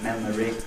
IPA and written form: ˈmeməri (memory)